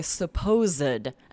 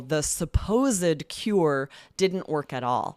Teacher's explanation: So as an adjective, we'll say supposed. And here we're making it 3 syllables and we pronounce that ed